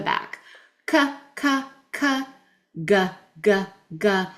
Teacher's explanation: our K and G are in the back of our mouth. The back of our tongue clicks off the top of our palate in the back.